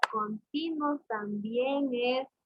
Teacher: Continuo también es, tiene diptongo. La U es una vocal cerrada y la O es una vocal abierta.